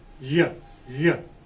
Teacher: back of our tongue goes up and goes very near to the hard palate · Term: palatal semivowel